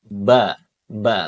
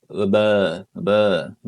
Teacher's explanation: makhrajnya untuk huruf ba ini dia adalah asyafatain, Teman-teman, atau kedua bibir ba ya. Jadi dia harus ee merapatkan bibirnya.